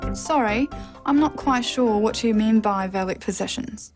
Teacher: The final example is a statement, so a falling tone is used.